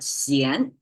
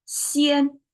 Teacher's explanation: Yesterday we talked about the xian, the rising tone. Today, same pronunciation, but flat tone